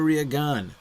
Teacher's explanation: you got an accent on the second A in your name, which means I should stress that syllable